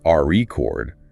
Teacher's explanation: If you stress the first syllable RE chord, it's a noun